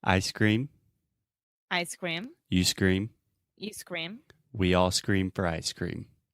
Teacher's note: it forces you to close your mouth at the end of the final M sound